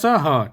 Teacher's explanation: जो ह है वह उष्म व्यंजन में आता है।